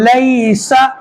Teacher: ینقلب لیسا، یہاں پہ یا ساکن ہے لیکن اس سے پہلے زبر، تو یہاں پہ یا لین ہوگا. جس طریقے میں یا مدہ کو کھینچ کر پڑھتے ہیں یا لین کو ہم جلدی پڑھیں گے